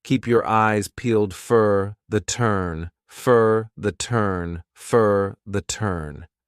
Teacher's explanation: for becomes an unstressed reduced sound fur